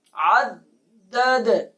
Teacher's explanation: جب وقف کریں گے تو دال پہ قلقلہ کریں گے